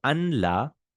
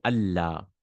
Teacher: So anla, you say Allah. The noon is changed into a lam, and the two lams are joined. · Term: idgham